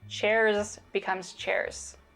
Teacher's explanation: So the Z sounds at the end of words turn into more of an S sound. You can hear this devoicing in the plural form of chair.